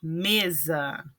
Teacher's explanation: Em mesa, o me é a sílaba tônica, então, a palavra paroxítona.